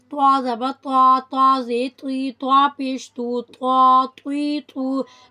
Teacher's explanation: زبان کی نوک اوپر کے اگلے دانتوں کی جڑ سے دباؤ کے ساتھ جب لگتی ہے تو ہمارے پاس طا ادا ہوتا ہے. Tip of the tongue pressed against roots of upper teeth